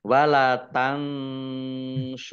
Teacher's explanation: nun sukun bertemu dengan huruf SH bacaan Ikhfa dibaca samar-samar